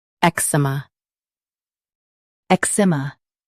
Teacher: Ek, s, m, eczema. Stress ik and keep s soft. The m is gentle.